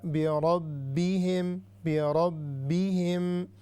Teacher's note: را heavy and با مشددہ